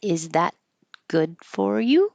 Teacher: It'll go up and you won't hear that T because there's a consonant after it. So, you just hold it. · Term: yes no question